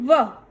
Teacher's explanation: ऐसे ही यह है दंत्योष्ठ वर्णः जैसे एग्जांपल है इसमें व। इसमें हम दंत एवं ओष्ठ दोनों का उपयोग करेंगे।